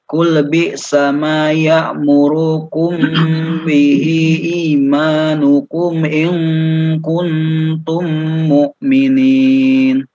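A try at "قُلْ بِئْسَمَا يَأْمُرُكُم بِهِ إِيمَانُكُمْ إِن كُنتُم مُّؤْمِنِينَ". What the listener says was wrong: Ya'murukum bihi, mim sukun dengan ba. Ya, di situ ditahan. Mim sukunnya. Ya'murukum bihi, ya'murukum. Mim sukun kalau bertemu dengan ba atau bertemu dengan mim lagi maka harus ditahan 2 harokat.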